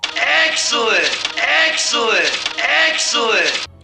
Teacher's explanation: when they say excellent, that's a lowered dress vowel